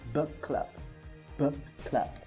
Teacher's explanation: we're going to put the same sound together, and in that sense we're going to pronounce only one sound, which is k. So in here we're going to say something like book and then club.